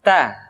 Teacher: Keluar dengan menyentuhkan ujung lidah kita dengan gusi-gusi gigi seri bagian atas. Ta. Kemudian, huruf Ta ketika diucapkan, terdengar ada nafas yang mengalir.